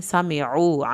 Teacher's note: عین کو حلق سے ادا کرنا ہے، واو ساکن کو کھینچ کے پڑھنا ہے